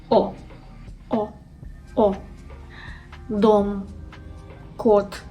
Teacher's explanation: It requires lips to be rounded, and your tongue should be pulled backwards and a little bit upwards to your soft palate. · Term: Sound O